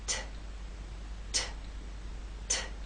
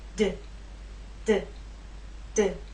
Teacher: There is more air released. There's a puff, a strong puff with the T. That strong puff is not present with the D.